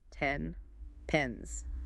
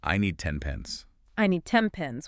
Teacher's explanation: It's also bilabial. By changing the N to an M, your lips are already in the perfect position to say P.